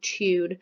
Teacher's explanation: it sounds like a CH sound at the beginning